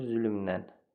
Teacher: Lə nən kimi tələffüz olundu. Səs artımı oldu.